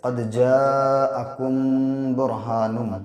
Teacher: میم ساکن کے بعد جب با آتا ہے تو ناک میں آواز میم کی روک کے پڑھیں گے